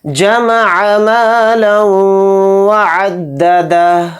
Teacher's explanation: ہا پہ الٹا پیش نہیں پڑھیں گے, ہا کو ساکن کر کے پڑھیں گے کیونکہ یہاں پر آیت ہو رہی ہے. حالت وقف میں ہا ساکن ہو کر پڑھا جائے گا.